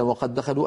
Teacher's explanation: أدغمنا الدال الأولى في الثانية فصار النطق بدال واحدة مشددة